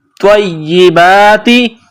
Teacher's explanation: طا کو موٹا کرنا ہے طا کو یا کے ساتھ ملائیں گے